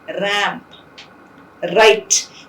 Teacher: There's no friction. R would be articulated without any friction. That's why it's called a frictionless continuant.